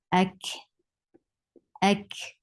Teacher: Attached with kaf. Kaf will get hums. Hums is a flow of breath.